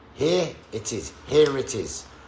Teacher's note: when the next word begins with a vowel sound, then it will just happen. The R sound will just happen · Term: linking R